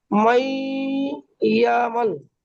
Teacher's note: জি, নুন সাকিনের পরে ইউমিনের নুন 4টি সাকিনের অক্ষরের পরে মধ্যে ইয়া এসেছে, ইয়া এসেছে, তাই নুন সাকিনের আওয়াজকে 1 আলিফ গুণনা করে পড়তে হবে, একে ঈদগামে নাকিস বলা হয়।